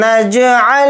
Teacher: جیم کے اوپر جزم ہے تو جیم کے اندر قلقلہ کریں گے